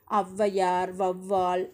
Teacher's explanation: அந்த சொற்களோட முதல்ல வரும்போது 2 மாத்திரை அளவிலிருந்து குறைந்து 1.5 மாத்திரை அளவில் ஒலிக்கிறது. இவ்வாறு குலைந்து ஒலிக்கும் ஔகாரம் ஔகார குறுக்கம்.